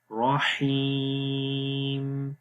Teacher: یا کے اوپر جزم اس سے پہلے زیر، تو یہاں پر بھی لمبا کریں گے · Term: یا مدہ